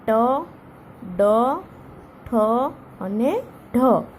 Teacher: જીભનો અગ્રભાગ એટલે કે આગળનો ભાગ ઉપરના મૂર્ધા એટલે કે દાંતના મૂળને સ્પર્શીને હવાને રોકે છે. એટલે કે જીભનો જે આપણો આગળનો ભાગ હોય છે એ આપણા દાંતના મૂળને સ્પર્શે છે અને પછી બોલાય છે. · એટલે કે દાંતની ઉપરના ભાગે જીભ અડે છે અને મૂર્ધન્ય ધ્વનિઓ કહેવાય છે. જીભનો જે આગળનો ભાગ હોય એ દાંતના મૂળને અડે છે. દાંતને નહીં પણ દાંત આપણો જે હોય ત્યાં એના મૂળને અડે છે.